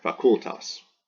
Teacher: It's very easy to say this U, it's very short if you just have one consonant. So this U is long by position because it's followed by two consonants, and the accent falls here, facultas.